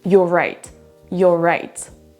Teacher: On ne dira pas you are right en faisant une pause au milieu, sinon c'est compliqué. On a un son R à la fin du premier mot et ensuite on redémarre avec un son R également